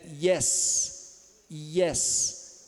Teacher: com ponta tá frente é bem no meio aqui né então a frente da língua se eleva em direção ao palato duro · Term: y do inglês